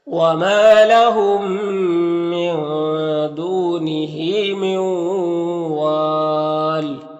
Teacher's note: وما میں الف مدہ ہے، ایک الف کے برابر کھینچیں گے، یہاں پر میم ساکن کے بعد میم ہے تو میم کو اس میم سے ملا کر غنہ کے ساتھ پڑھیں گے، اس کو ادغام شفوی کہتے ہیں۔